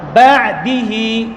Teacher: আইন পাতলা হবে এবং জায়গা থেকে নড়ে যাবে না। বা এমন হবে না।